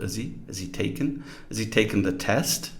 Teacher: don't say has we say h he reduced to e h we can even elide the initial H sound